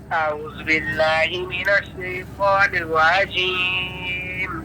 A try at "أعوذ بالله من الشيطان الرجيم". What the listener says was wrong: أعوذ سيني पढ़ा أعوذ जाल पे जू है. أعوذ بالله من الشيطان الرجيم.